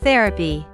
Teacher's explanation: The word is stressed on the first syllable.